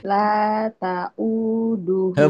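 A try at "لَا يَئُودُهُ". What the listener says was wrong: Bukan tat itu jadi bawah. Ketuker. Ketuker. Bukan tat tapi ya ya. La yauduhu.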